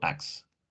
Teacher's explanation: The sound t it's omitted before s. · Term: elision